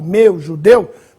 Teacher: as palavras de timbre fechado, ditongo com timbre fechado